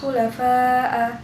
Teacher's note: bacaan mat wajib mutasil sebab mat tabi'i bertemu dengan hamzah dalam satu kalimat dan panjangnya 2,5 alif atau 5 harokat